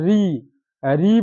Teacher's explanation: ऋ बोलते हैं तो ऋ में र का भी उच्चारण आ जाता है